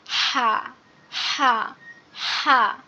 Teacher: কিন্তু উচ্চারণের সময় এই বড় হা যেটা, এটার উচ্চারণ হবে গলা চেপে, অর্থাৎ কণ্ঠনালীর মধ্যখান হতে গলা চেপে উচ্চারণ হবে।